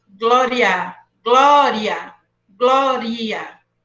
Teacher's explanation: E na palavra glória, eu tenho primeiro a fraca e depois a forte.